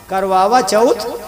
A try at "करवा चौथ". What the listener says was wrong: पगले, करवावा नहीं, करवा चौथ।